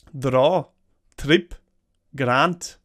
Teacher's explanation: Words like draw, trip, or grant all get a rolling R sound.